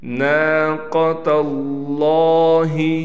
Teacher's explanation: قاف کو ہم نے پر کر کے پڑھنا ہے، نون کے بعد الف ہونے کی وجہ سے نون کو کھینچ کر پڑھیں گے